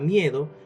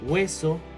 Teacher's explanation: diptongo creciente formado por una vocal cerrada y una vocal abierta